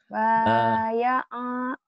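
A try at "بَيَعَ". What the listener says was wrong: Pendek atuh. Pendek.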